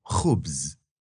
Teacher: just get close to the soft palate and let air squeeze by